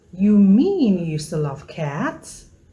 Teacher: tone starts from a level high pitch Falls to a low pitch then rises again